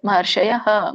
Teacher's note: ಮಹರ್ಷಯಹ ಅಂತ ಹೇಳಿ ಯಹ ವಿಸರ್ಗ ಇರೋದರಿಂದ ಅ ಉಚ್ಚಾರಣೆ ಬರುತ್ತೆ